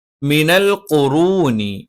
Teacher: മ രണ്ട് ചുണ്ടിൽ നിന്നാണ്. രണ്ട് ചുണ്ടും അടച്ചു വെച്ചുകൊണ്ടാണ്